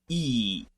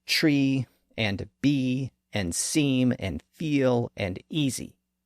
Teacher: as we'll see it can be represented with several different letters that e sound is made very high up in the front part of the mouth it's the highest front vow that we can make here's how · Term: the sound e